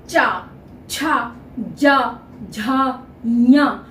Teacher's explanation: जिसको हम तालू बोलते हैं उस तालू को छूता है च जीभ का बीच का भाग जो है वो ऊपर के तालू को छूता है तब हम चा बोलते हैं तब हम चा छ ज झा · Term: च वर्ग